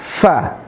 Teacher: Gigi seri atas ketemu dengan bibir bawah. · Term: huruf fa